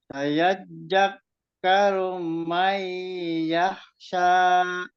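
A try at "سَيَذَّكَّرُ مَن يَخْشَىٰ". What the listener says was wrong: Kali lagi disempurnakan kho-nya disempurnakan lagi. Sya itu sya ya, sya juga yang kemarin di makhrotnya di tengah-tengah lidah, yang bermakhrot di tengah-tengah lidah itu ya, sya, dan apa namanya jim.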